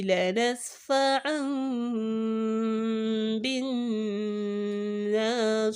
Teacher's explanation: we are not pronouncing the kisra. Instead, we are substituting with a sukun because there is no mud in front of it.